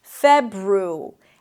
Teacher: You start with an F sound, then it's the as in red, fe, you close your lips for a B, feb, then ru, an R sound and a tense U, febru, and then airy, like the ending of January.